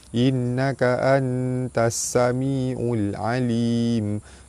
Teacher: Nun mati bertemu dengan ta, hukum dia ikhfa hakiki, dibaca sama-sama nipis serta dengung dua harakat. · Baris atas bertemu alif mad asli panjang dua harakat. Nun sabdu hukumnya wajibul gunnah, ditekan dan ditahan serta dengung dua harakat.